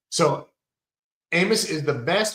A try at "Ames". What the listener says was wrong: Ames is the best. Oh, sound like you said Amos.